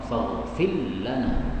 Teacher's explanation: ra-nya idgham menjadi lam